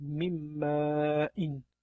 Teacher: Bu yerda n harfi ham tushirib qoldiriladi hamda m harfi g'unna bilan o'qiladi va mimmain deb o'qiladi. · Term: g'unna bilan idg'om